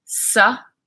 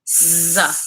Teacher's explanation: So you will feel the vibration with z. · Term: voiced